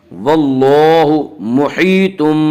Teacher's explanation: واللہ محیطم، یا مدہ وہ یا جو ساکن ہو اور اس سے پہلے اس سے پہلے زیر ہو، یا مدہ کو ایک الف کی مقدار کھینچ کر پڑھیں گے